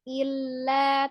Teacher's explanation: tengah-tengahnya lam juga memiliki sifatnya tawassut atau bainiyah, tengah-tengah.